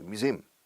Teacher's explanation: Stress the second syllable